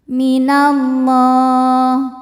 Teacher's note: alif lam menghadapi huruf syamsiyah yaitu lam, maka alif lam tidak kita baca atau disebut dengan idgham syamsi. Minallah, Allah mad tabi'i muqaddar karena lam berbaris fathah panjang, maka huruf lam dipanjangkan 2 harokat.